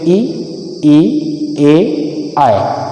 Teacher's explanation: जब हम ऐसे स्वर का उच्चारण करते हैं जिसका उच्चारण जीभ के अग्र भाग से होता है, वह आग्र स्वर कहलाते हैं। इनमें ई, ए, आए, ये वर्ण आते हैं।